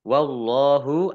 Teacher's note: Allahnya dibaca tebal karena harakat di depannya fathah